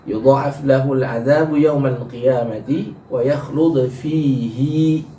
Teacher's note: Imam Hafiz membacanya dengan hi-nya dipanjangkan dua harokat.